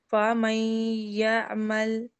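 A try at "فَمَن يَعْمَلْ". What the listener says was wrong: عین کو ٹھیک کرنا ہے.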